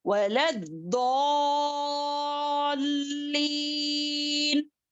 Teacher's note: مد لازم ہے 6 حرکات کے برابر کھینچیں گے